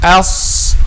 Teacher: heaviness is done by raising the back of the tongue. Okay, so else, don't say else, no, else.